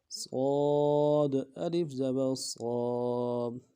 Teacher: لفظ صاد یہ موٹا حرف ہے، اس کو موٹا پڑھنا ہے، اس کی سیٹی جو ہے یہ موٹی ادا ہوگی۔ اس کو باریک ادا کریں گے تو یہ لفظ نہیں رہے گا، اس کا مخرج بدل جائے گا۔